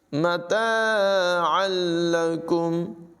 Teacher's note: مَتَاعًا لَكُمْ عین کو لام کے ساتھ ملائیں گے، تنوین کے بعد لام ہے، ادغام ہوگا لیکن بلا غنہ یعنی غنہ کے بغیر پڑھیں گے